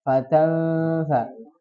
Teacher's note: Tanfa ketemu fa. Ya, hukumnya apa? Ikhfa. Jadi didengungkan.